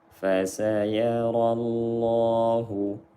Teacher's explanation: Lam jalalah dibaca dengan tafkhim, tebal, karena sebelumnya berharokat fathah.